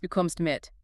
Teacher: In German, if I say, du kommst mit, but with a falling tone dropping the pitch deep at the end, it is grammatically a question, but pragmatically it is an order.